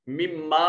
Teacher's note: مما میں میم مشدد ہے غنہ واجب ہوگا